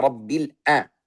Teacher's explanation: Ini ain tapi tidak mengalir, sifatnya jahar. Karena makhrajnya sudah tertutup.